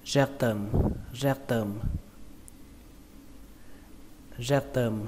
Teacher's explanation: trọng âm của từ này rơi vào âm đầu tiên, đó là âm rec, rec. Âm thứ hai là term, term.